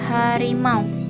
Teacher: Dihasilkan oleh pangkal tenggorokan, sebuah rongga pada ujung saluran pernapasan yang ujungnya ada sepasang pita suara